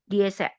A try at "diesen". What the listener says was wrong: Diesen dengan N.